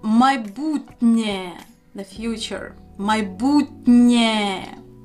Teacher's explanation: Because of Є, Н is pronounced softly as Н.